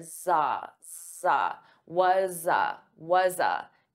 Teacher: it's a z, z, it's a voiced sound. So I'm going to transfer that sound to ah. So you hear za, za, was a, was a. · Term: linking the sounds